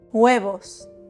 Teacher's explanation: Remember that the Spanish H is silent and that the V is pronounced like a soft B. B and V in Spanish, B y V, are pronounced the same.